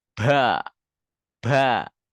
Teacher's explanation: teman-teman dari daerah Jawa itu biasa dikasih hams Ya dikasih udara dia